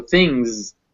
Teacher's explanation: this word is written with that S at the end, but it's actually pronounced with a Z